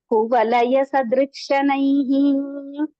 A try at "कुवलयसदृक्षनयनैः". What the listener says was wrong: ஐஹி இல்ல நயனைஹி கண்ணு